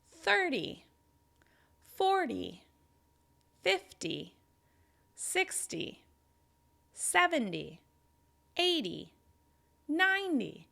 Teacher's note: the first syllable receives the stress and the second syllable is a little less distinct because it's not stressed